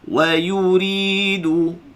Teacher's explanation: Ri 2 harakat, baca nipis ra.